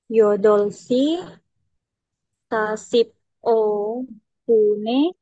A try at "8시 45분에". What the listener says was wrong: Bukan sasip, Jangan sasip o. Kalau sasip o itu kamu bacanya kayak berhenti. Sasip o. Jadi kayak P malahan. Sasip o. Ini jadi satu karena kan hurufnya B. Makanya sasibo.